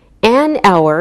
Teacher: we don't pronounce the H, so it sounds like a vowel sound